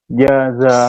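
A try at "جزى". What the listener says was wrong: Ditekan lagi za-nya. Jaza.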